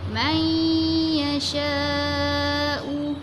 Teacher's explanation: Kita masukkan huruf nun ke dalam huruf ya sambil kita dengung.